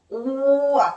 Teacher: 단모음 오와 아가 결합하니까 와를 천천히 발음한다고 생각하면 오와 이렇게 되는 거야. 오와 이렇게 되니까 입모양이 동그랗게 시작했는데 벌어져. 옆으로. 입모양 바뀌어요. 입모양이 바뀌고 혀의 높이도 바뀌어요. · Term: 이중모음